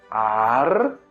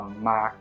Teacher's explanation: nós temos a sílaba ar, que é longa, depois a sílaba ma, que é breve